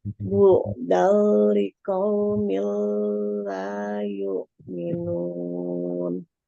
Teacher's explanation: Bu'dal itu ada fathah tanwin bertemu dengan lam disebut ilham bila guna, yaitu dileburkan tanpa dengung.